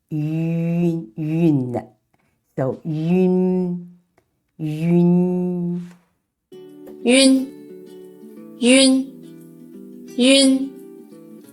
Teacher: when pronouncing yun sound, we need to say yu first, and then quickly glide to n sound. Make sure the air comes out from the nasal capacity.